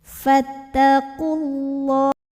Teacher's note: lam jalalahnya dibunyikan secara tafkhim karena huruf sebelumnya dah maka tebalkan